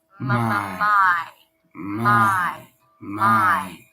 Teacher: So we're going into an I diphthong. You want to drop your jaw and then raise the tongue for an E sound